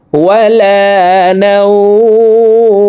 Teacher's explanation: নাও এখানে 1 আলিফ টেনে মিমকে সাকিন করতে হবে, কারণ জবরের বাম পাশে জজমালা ওয়াও লিনের হরফ।